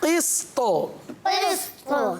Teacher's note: آخر میں قلقلہ بھی کرنا ہے